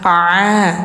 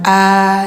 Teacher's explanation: ain itu tenggorokan tengah